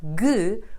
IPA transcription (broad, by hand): g